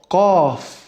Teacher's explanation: Donc là, ça vient du fond de la gorge.